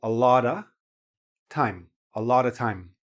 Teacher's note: Notice also that the last consonant goes into the vowel